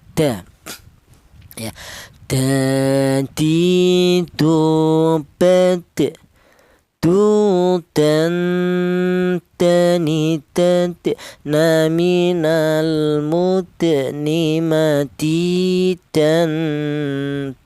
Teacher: Huruf dal ini sama dengan huruf ta, yaitu ujung lidah menyentuh pangkal gigi seri atas